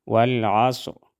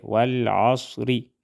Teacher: ری والعصری والعصری صاد کو ہم موٹا ادا کریں گے اور وقف کی صورت میں را موٹا ادا ہوگا